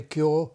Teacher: Because, I mean, of course, my native accent doesn't have but increasingly I think people in southern Britain are like me in using the north vowel there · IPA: /kjɔː/